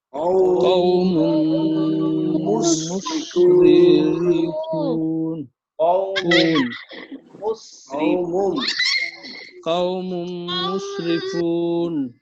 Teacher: মিমটা মিমের সাথে সংযুক্ত করে মিলিয়ে পড়তে হবে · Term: ইদগাম বাগুন্না